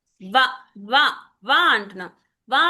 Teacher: వా అనగానే దంతాలకు తగులుతుంది, పెదాలకి తగులుతుంది. ఆ రెండు స్థానాల నుంచి వస్తుంది కాబట్టి దాన్ని ఇక్కడి నుంచి ఒక్క నిమిషం, ఇదేదో వచ్చింది నాకు. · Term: దంత్యోష్ట్య